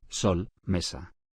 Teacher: Se considera una sola letra en el alfabeto español. S. Representa el sonido fricativo alveolar.